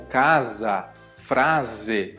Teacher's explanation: Já o s é igualzinho em português. Entre vogais, como casa, frase, ele vai ter esse som z